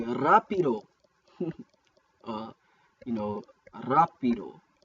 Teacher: It's pronounced like a rolling R, just like in Spanish